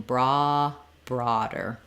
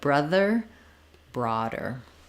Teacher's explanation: the D is flapped, so the D lifts up, the voice is on.